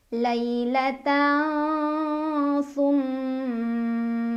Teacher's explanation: Lailatan summa, ada gunnah musyaddadah karena ada mim yang bertasydid. Cara bacanya didengungkan, ditahan kurang lebih 2 harokat.